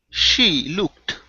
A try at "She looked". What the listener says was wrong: Good. Okay, that's what you want to do. Excellent job.